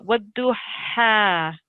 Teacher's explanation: let's try and get this ha sound from the back of the throat